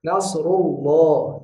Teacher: lamnya itu ketika huruf sebelumnya adalah harokat fathah atau dhammah, maka lamnya kita baca tebal yang sempurna. Nasrullah. Jangan lamnya tipis.